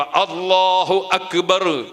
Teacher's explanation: അക്ബർ എന്ന ആ എന്ന അക്ഷരവും തൊണ്ടയുടെ ആ തലക്ക് നിന്ന് തന്നെ ഉച്ചരിക്കണം